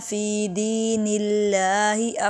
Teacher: فی دین اللہ میں لفظ اللہ سے پہلے زیر ہے، اس لیے باریک پڑھیں گے